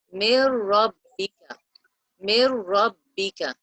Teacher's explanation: Mir rabbika, and not hold the sound for 2 counts. So the noon is dropped out and we have merged the sound of both words with the sound of the noon with the ra